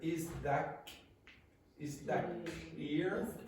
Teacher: the T in front of the K, very often what happens is that the T before becomes a K. Or sometimes a glottal stop.